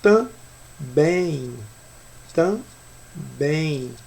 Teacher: Se vocês falarem pausadamente essa palavra, você percebe que também, também. Você percebe que o M, na verdade, ele tem som de I e não som de M. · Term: ditongo